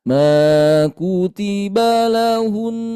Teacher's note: nun bertasydid, maka tahan lebih lama